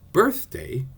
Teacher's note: The word birthday has two syllables, but it isn't an iam because the accent is on the first rather than the second syllable.